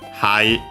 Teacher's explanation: notice a high accent on the ha